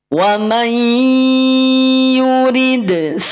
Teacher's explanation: Karena ketemu dengan ya, semula dia n, nun sukun jadi ai. Idghamnya idgham BG.